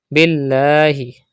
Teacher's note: Pronounce the lam of Allah's name with thin voice because there is zir before it.